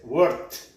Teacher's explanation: Que si es silenciosa, como en este caso el verbo trabajar, entonces la ed se pronuncia como una t. Entonces el pasado de trabajar, work, es worked. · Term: sonido T